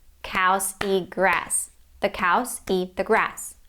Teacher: it takes the same amount of time to say them because of this contrast between stressed and reduced words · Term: stress-timed language